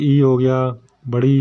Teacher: सम्रत वो है जिनके बोलने में मुंह लगभग बंद ही रहता है